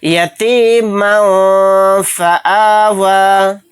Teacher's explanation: यहाँ पर मीम के ऊपर क्या है, तनवीन, तनवीन के बाद फ़ा आ गया, फ़ा इख्फ़ा के 15 हरूफ में से एक हर्फ है, तो यहाँ पर भी इख्फ़ा का कायदा होगा। मीम दो ज़बर मन को कहते हुए जो लास्ट में नून की आवाज़ आ रही मन मन, उसी को नाक में छिपाना है।